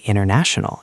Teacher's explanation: after an N in an unstressed syllable, the T often vanishes. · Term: silent T